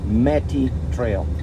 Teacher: Turns out it's Native American, and it's Metty with a stress on the first syllable. Metty Trail.